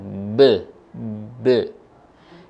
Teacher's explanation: Huruf ba ketika kita ucapkan dalam kondisi sukun, dia terletak di bibir yang dirapatkan. Kemudian ada suara pantulan be.